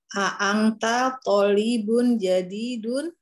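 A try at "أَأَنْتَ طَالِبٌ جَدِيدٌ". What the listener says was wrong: Aywa, tolibun, tonya panjang. Tolibun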